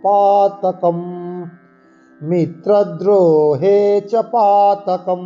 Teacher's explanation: পদান্ত যে অনুস্বার থাকে তা ময়ের মতো আমরা উচ্চারণ করব